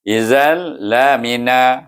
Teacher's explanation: Dimasukkan dal kepada lam, tetapi tidak ada dengung. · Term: idgham